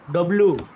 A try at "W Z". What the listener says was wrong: ডাবল ইউ, ডব্লিউ না বলে ডাবল ইউ, জেট।